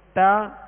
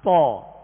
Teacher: تا کو باریک پڑھیں گے اور تو کو پر یعنی موٹا پڑھیں گے